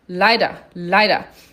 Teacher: E o leider tem o EI, que a gente já viu que tem som de I, lei, e o ER no final que tem som de A